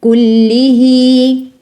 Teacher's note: un ya saghira qui te dit prolonge cette kasra 2 temps